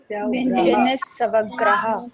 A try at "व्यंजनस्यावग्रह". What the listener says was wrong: ना ऐसे नहीं, ऐसे नहीं, व्यंजनस्यावग्रह। या जो है या में दीर्घ का उच्चारण आना चाहिए। व्यंजनस्यावग्रह, व्यंजनस्यावग्रह